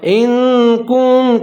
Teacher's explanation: नून साकिन है, आगे हुरूफ इख्फा आ रहा है तो यहाँ आवाज़ को नाक में ले जाऊँगा